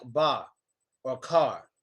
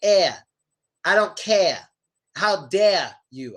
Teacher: We give it a little R sound, but in some places, they really don't give it an R sound.